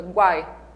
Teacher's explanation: Vamos pensar nessa última sílaba, guai. O U é fraquinho, semivogal, e o I também é fraquinho, outra semivogal.